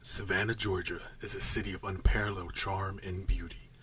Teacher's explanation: deep, low, rich, warm, kind of smoky, husky kind of sound